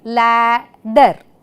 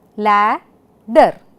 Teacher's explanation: In the first syllable lad we have the vowel ah and in the second syllable ehh.